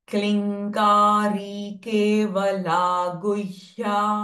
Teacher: with अनुस्वारा follow by next क sound so the अनुस्वार sound विल become न